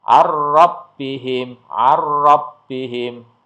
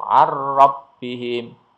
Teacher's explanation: Jadi tidak didengungkan dan tidak ditahan ya langsung arbihim